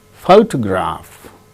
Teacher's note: in the case of the word photograph the first syllable gains stress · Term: word stress